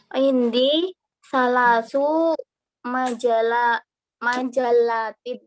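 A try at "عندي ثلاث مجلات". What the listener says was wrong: Indi salasu majallatin. Nah, ahsan ya,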